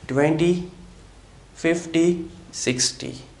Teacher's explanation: In case of 20 50 or 60, T doesn't turn into D